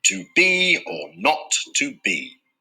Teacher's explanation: This 2-syllable foot is like a reverse trochee, so the first syllable is unstressed and the second is stressed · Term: iam